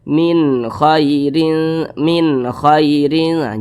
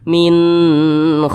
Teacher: halqi maka nun sukun berjumpa dengan huruf k hukumnya izhar halqi maka dibaca jelas tidak berdengung